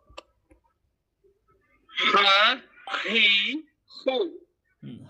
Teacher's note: এখান থকে উচ্চারণ হয় আর হাটাও কিন্তু এখান থেকে উচ্চারণ হয় কন্ঠনের মধ্যে কিন্তু বাতাস বের হবে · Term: গোল হা